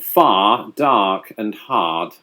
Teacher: The beauty of that kind of old world Bostonian English is that it doesn't adhere to the same rhotic pattern that a lot of American English does, where you pronounce that final R